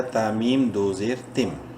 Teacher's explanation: میم مشدد ہے، غنہ کریں گے ، اور میم کو ایک الف برابر لمبا کریں گے الف